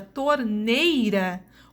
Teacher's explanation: na palavra torneira, o I tem o som mais fraco, portanto, é a minha semivogal